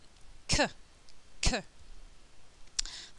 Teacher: the tongue is touching the top of the mouth at the back of the mouth it's kind of a weird sensation when you're producing this sound · k is unvoiced. There's no vibration of the vocal cords, and there's a strong flow of air. It will make my piece of paper move.